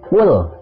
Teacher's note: Lam sukun tidak boleh dibaca mantul